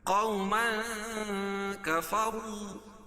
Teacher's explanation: تو یہاں ناک میں آواز کو چھپا کر پڑھیں گے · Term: اخفاء حقیقی